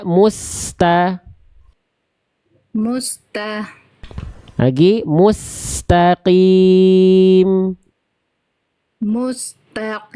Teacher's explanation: terhenti Sin punya sifat rakhwah dan hams mengalir nafas mengalir suara Jangan terputus antara Mus dengan ta